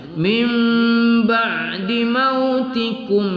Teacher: Nun sukun bertemu ba, kita baca iqlab, kita dengungkan.